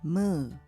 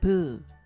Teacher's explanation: moo is a nasal sound and Bo is a plain stop sound the aspirated Buu is PU and the tense consonant is BU